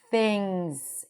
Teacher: Things, we have a lax I sound, things. And notice that we have the NG sound and then the Z, things, things.